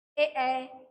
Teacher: ए बोलने से हमारे होठों में खिंचाव आता है